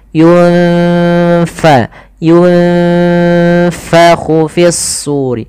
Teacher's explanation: Jangan dibaca yunpaku jangan pakai p tapi dia F